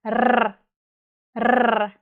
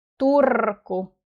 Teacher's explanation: And in Finnish we roll our R's.